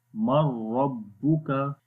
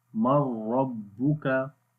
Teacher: Again we make idgham, but we do not make ghunnah, we only read without ghunnah.